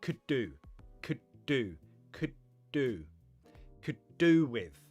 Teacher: Pronunciation of could do. Push it together like one word.